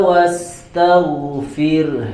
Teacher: maka huruf ro-nya dibaca dengan tipis karena sebelumnya ada huruf yang berharokat kasroh